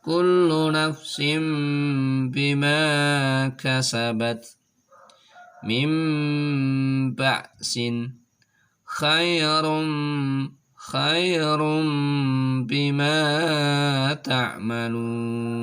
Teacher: Ketika ada nun sukun, ketika ada tanwin bertemu dengan huruf ba, maka suara nun sukunnya atau suara tanwinnya dirubah menjadi suara mim dengan disertai suara mendengung. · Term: iqlab